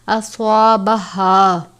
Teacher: گول والی ہا ہے یا موٹے والی ہا، حلق کے آخر سے ادا کرتے ہیں بھاری آواز کے ساتھ، اس کو باریک نہیں پڑھنا۔